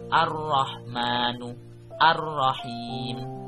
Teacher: Yang kedua ada al-syamsiyah atau cara membacanya asy-syamsiyah, berarti alnya tidak terdengar.